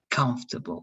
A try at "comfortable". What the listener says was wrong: And try, it's noticeable that you're using the O because you're putting too much emphasis on that O. Only like if it's like a passage word, like comfortable.